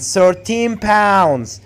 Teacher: you have to put the stress on pounds not 13 why because 13 here is an adjective so in this case